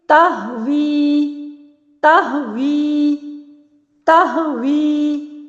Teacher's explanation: ہونٹوں کو گول بھی ناتمام کیا اور واؤ کے نیچے زیر آ گئی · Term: واؤ متحرکہ